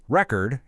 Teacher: If we stress the first syllable, record, it's a noun, like a vinyl record.